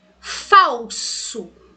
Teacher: E esse L que aparece aqui, ele tem som de quê? De U. Ele tem som de U junto de uma vogal na mesma sílaba. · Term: Semivogal